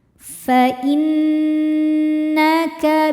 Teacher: Nun hukumnya gunnah musyaddadah karena nunnya bertasydid. Dibacanya dengung, tahan bunyi n-nya